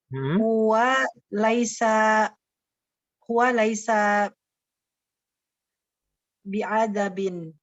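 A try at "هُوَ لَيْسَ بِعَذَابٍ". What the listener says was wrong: Bi'azabin. Zainya jangan seperti pengucapan zai, jangan sampai seperti zal ya.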